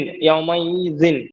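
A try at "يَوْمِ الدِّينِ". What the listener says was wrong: তাহলে ইতে টান হবে না। ইয়াউ মা ই দিন। পরপর একই রকম। ইয়াউ মা ই দিন, মা ই দিন। কোথায় টানে দেন? ইয়াউ মা ই দিন। ইয়াউ মা বলেন।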